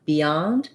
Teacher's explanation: So it is a pretty typical everyday word, and we have second syllable stress. The beyond, we have a little bit of an E sound there.